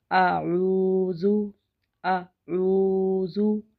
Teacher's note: जब लफ्ज़ को पूर पढ़ते हैं तो मुंह को होंठों को गोल करते हैं। कुल आइन आइन के बाद वाव साकन है और ये वाव मद्दा है, तो इसको हम एक अलिफ खींच कर पढ़ेंगे।